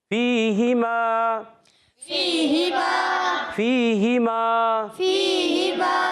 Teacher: فِيهِمَا میں فا یا زیر, فی یا مدہ ایک الف کھینچیں گے, ہا کے نیچے زیر حرکتیں نہیں کھینچیں گے.